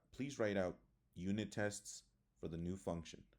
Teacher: commands the pitch Falls at the end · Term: falling intonation